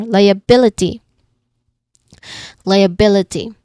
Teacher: You pay attention to the primary stress on the third syllable.